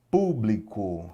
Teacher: Público, separei a sílaba aqui, ó. Sílaba tônica é o pu